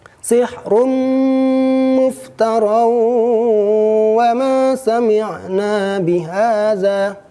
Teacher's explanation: Contoh sihrum muftara ketemu huruf mim, sementara contoh muftarawa ketemu huruf waw, ya nun mim waw. Cara membacanya adalah pertama dimasukkan, asalnya sihrunmu menjadi sihrummu, asalnya muftaronwa menjadi muftarawa, dan terakhir dibaca dengan dengung. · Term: idgham bigunah